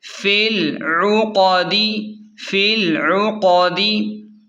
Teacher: عین پیش عو، قاف زبر قا، قاف کو موٹا پڑھیں